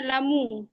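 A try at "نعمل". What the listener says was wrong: না মালু, না লামু না, কিন্তু খুব খেয়াল করতে হবে। দেখেন, না লামু বললে ভিন্ন শব্দ হয়ে যাবে, চেঞ্জ হয়ে যাবে অর্থ। না মালু,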